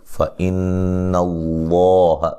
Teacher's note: پڑھیں گے اور نون تنوین کا اخفا ہے باریک، فَإِنَّ اللَّهَ لفظ اللہ کو موٹا ادا کریں گے، اس سے پہلے حرف پر زبر ہے